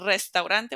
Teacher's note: even if there's only one R we're going to make it roll so it's going to be a strong one